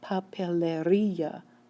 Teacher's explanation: you should be able to hear that the stress is actually appearing on the end of this word, and yet it ends in a vowel.